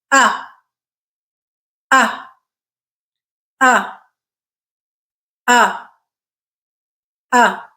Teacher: mouth so that's kind of where the focus needs to be tongue isn't really doing much it's just hanging out there in the center of the mouth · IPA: /ʌ/